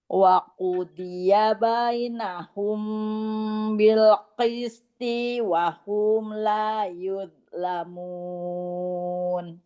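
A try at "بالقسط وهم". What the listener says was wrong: Toknya jangan dipanjangkan bil qisti wa hum. Bil qisti wa hum.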